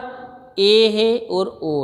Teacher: उच्चारण में मुख आधे से भी कम खुले, मतलब थोड़ा खुला तो उच्चारण हुआ, अब उससे भी कम खुले, जैसे थोड़ा खुला तो समृद्ध हुआ, और उससे भी कम खुले तो वह अर्ध समृद्ध होता है।